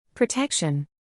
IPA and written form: prəˈtɛkʃən (Protection)